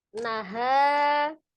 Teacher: mad jaiz munfasil, panjangnya 4 atau 5 ha, panjangkan dulu ya.